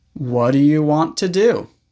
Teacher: Do, when it's not the main verb, is almost always pronounced d.